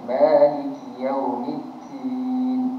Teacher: Din jangan kita keluarkan angin.